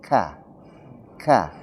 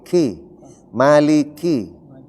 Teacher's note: Penyebutan huruf kaf ka. itu ada napas keluar ka.